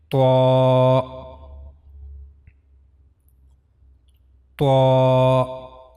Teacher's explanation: the tip of tongue, and it will go connect to the gum line of the two front upper incisors at back